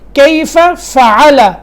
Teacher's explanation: کیف فعل ربک، کیف، فا کے اوپر جو زبر ہے اس کو لمبا بالکل نہیں کرنا، بس فا زبر فا، اس کے بعد پھر فا آ رہا ہے، اس کے بعد فعل کا، یعنی 2 فا ساتھ ملے ہوئے آ رہے ہیں۔ کیف فعل، 2 فا صاف کر کے پڑھنے ہیں، یہ نہ ہو کہ اس میں جو ہے وہ فا جو ہے وہ چھوٹ جائے، یا فا کو فا میں ادغام کر دیا جائے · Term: وضاحت اور صفائی